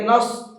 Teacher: سواد کو منہ بھر کے پڑھتے ہیں، اگر منہ بھر کے نہیں پڑھیں گے تو پھر وہ سین بن جائے گا، اس لیے نص نہیں پڑھنا ہے بلکہ نص، سواد کو تھوڑا سا منہ بھر کے پڑھنا ہے۔